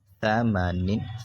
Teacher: دو زیر نن ثمانن، ثا کو نرمی کے ساتھ پڑھیں گے، یعنی دونوں دانتوں کے بیچ سے زبان نکالیں گے